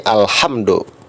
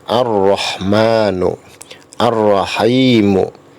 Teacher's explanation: Alif Lam Qomariah saat dibaca huruf lam nya masih jelas sedangkan alif lam syamsiah saat dibaca huruf lam nya hilang seolah-olah hilang atau tidak terdengar tulisannya tetap ada tapi ketika dibaca